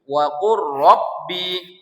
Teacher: Jadi kita membacanya wa qur rabbi, lamnya hilang, ya, lamnya tak perlu dibaca. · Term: idgham